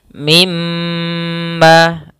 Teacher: Mi Nun tasdid atau mim tasydid maka hukum bacaannya yaitu ghunnah ghunnah yaitu menahan suara mnya kalau di sini mim berarti ditahan mnya maka mimma kita panjangkan dua harakat kemudian Ma ada huruf alif